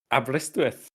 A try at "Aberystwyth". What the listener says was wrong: There's no need for you to put the accent on it.